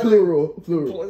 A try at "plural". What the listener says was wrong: This nigga couldn't say plural. It's plural, It's not plu, nigga. Where you getting the O's from?